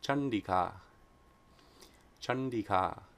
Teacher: if anuswara precedes a cerebral sound, it's pronounced like the cerebral nasal na.